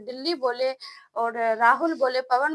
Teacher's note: निरअनुनासिक, जो सिर्फ मुख के सहायता से बोले जाते हैं, अगर दिल्ली बोले और राहुल बोले, पवन बोले, ऐसे अगर कोई वर्ड आता है तो इसमें सिर्फ नाक पे कोई प्रभाव नहीं पड़ता है, सिर्फ मुंह की सहायता से बोला जाता है।